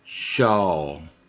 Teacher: you now you hear that L just a little bit at the end